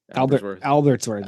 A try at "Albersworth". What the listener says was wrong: Albersworth without a T.